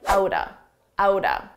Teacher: This is a contraction of that is, that's. Now we have out of. We can combine these two sounds together and it will sound like outa